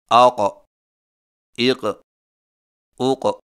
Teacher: قاف موٹی آواز اور جھٹکے والی ادائیگی کے وقت زبان کی جڑ کو کوے کے متصل تالو پر لگائیں